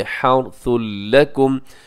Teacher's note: तनवीन के बाद लाम आ गया है तो लाम यरमलून में से इदगाम कीजिएगा बगैर गुन्ने के